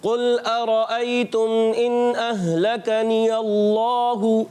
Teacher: اللہ پاک کے نام پر کھڑا زبر ہے تو ایک الف کھینچ کر ادا کریں گے, اور ہا پر پیش ہے اس کو بغیر کھینچے ادا کرنا ہے.